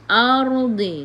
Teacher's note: Ardi. Sebelum ra ada baris atas, kena baca dengan tebal. Tafkhim, lidah diangkat ke atas.